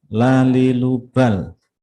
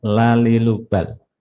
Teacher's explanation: Sisi bagian depan lidah mengenai gusi gigi depan atas, ya. La itu dibaca tipis. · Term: lam